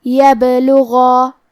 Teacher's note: کلمت یبلغا میں حرف البا پہ جزم ہے لہذا ہمیں با کو قلقلہ سے پڑھنا ہے اور قلقلہ کا معنی ہے حرف ساکن کو ہلانا تو ہم حرف البا کو ہلاتے ہوئے یہ کلمہ کو پڑھیں گے.